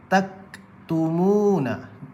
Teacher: Nampak praktikal huruf kaf tu dia tertahan suara.